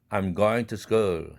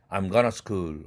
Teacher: going과 to school 사이에는 멈춤이 있어요. 아주 짧지만 아주 짧은 멈춤이 생기므로 동화 현상이 일어나지 않습니다.